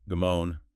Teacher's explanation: Stress on the second syllable, moan. 2 syllables.